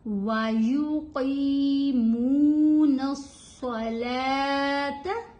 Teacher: یہاں پہ قاف کی آواز بھاری آواز ہے، صاد کی آواز بھاری ہوگی